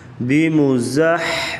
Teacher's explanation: میم پیشمو، بیمو، زا زبر حا، زح، زا کو سختی سے پڑھا جاتا ہے سیٹی کی آواز، اور حا کا تعلق گلے سے ہے